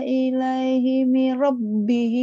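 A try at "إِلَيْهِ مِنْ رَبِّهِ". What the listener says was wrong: Bukan. Ilaihi mir rabbihi. Ada tasjid Kakak.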